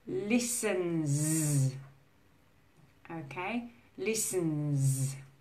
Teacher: This is a very challenging sound for Spanish speakers especially, because you don't have that z sound in Spanish.